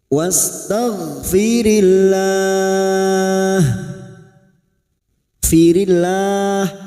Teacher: lam jalalah yang sebelumnya kasroh, lam jalalah kita baca tipis atau tarkik